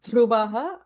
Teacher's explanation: And dhruvaha again is a mahaprana dha, second dha.